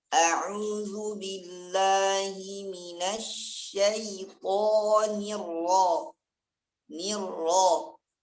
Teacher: Nampakkan kasrah ni dulu secara sempurna, baru masukkan ke ra.